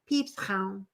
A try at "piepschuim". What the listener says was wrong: No, there is no ow involved in there.